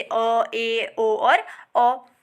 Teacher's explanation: जिनके उच्चारण में जो हमारा मुख का द्वार है वो आधा खुलता है उसे बोलते हैं अर्धविवृत